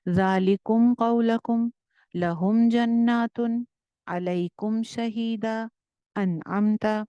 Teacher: मीम को जाहिर करके बगैर गुन्ना के पढ़ते हैं